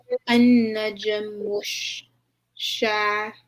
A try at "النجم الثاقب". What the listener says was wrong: Is it shy? ثاقبة.